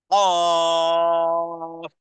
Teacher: জিহ্বার গোড়া ঠিক তার বরাবর উপরের তালুর সাথে লাগিয়ে দিয়ে উচ্চারণ করতে হবে।